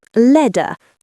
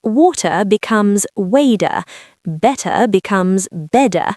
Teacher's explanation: In American English, if a t is between two vowel sounds, it transforms into a soft d. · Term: flap t